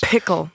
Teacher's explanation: you start to get this big puff of air on the P sounds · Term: plosives